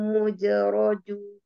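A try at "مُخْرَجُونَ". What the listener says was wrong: Bukan muj, kho itu mukhrajun, kho-nya, agak ngorok.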